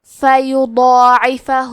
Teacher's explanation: حسنا فیضاعفہ، کلمت فیضاعفہ میں ضاد پہ کھڑا زبر ہے تو یہاں مد الف ہے تو کیونکہ ضاد حروف التفخیم میں سے ہے تو ہم مد الف کو بھی بھاری آواز میں ادا کریں گے۔